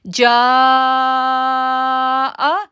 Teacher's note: ہم 6 سیکنڈ کے لیے اس کو کھینچیں گے اور پھر جو ہے وہ حمزہ زبر آ کا ساؤنڈ ادا کریں گے, کیونکہ جیم کے ساتھ جو ہے وہ مد متصل ہے, تو مد متصل اگر آئے گی تو ہم اس کو 6 سیکنڈ کے لیے کھینچیں گے